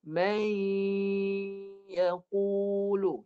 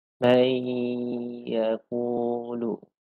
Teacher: Sebahagian suara di hidung dan sebahagian lagi adalah di bahagian mulut. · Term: mudghamah